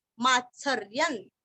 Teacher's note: रिय के ऊपर अनुस्वार का उच्चारण आधा न